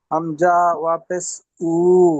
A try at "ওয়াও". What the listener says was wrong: ওয়া পেশ নয় ওয়াও। ওয়াও বলেন ওয়াও।